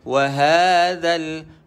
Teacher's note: Za, pastikan huruf zal, hujung lidah betul-betul kita duduk parking di antara gigi atas dan gigi bawah.